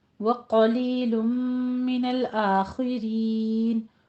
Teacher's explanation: व कलीलुम मिनल आखिरीन, कौफ को भी पुर पढ़ना है, लुम में इदगाम वाल गुन्ना है, आखिरीन में खा को भी पुर पढ़ना है, और इसकी कसरा भी बारीक रखनी है, रॉ को भी बारीक पढ़ना है